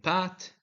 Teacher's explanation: p in Pat is made by closing the lips and releasing them